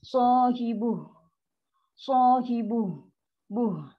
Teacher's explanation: Dan ha ada sifat rohawah, lepaskan angin.